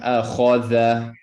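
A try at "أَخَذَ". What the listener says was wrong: Not da. Tha. Bring your tongue up, vibrate.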